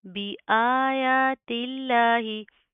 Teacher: हम लफ्ज़ अल्लाह को बरीक पढ़ेंगे पतला पढ़ेंगे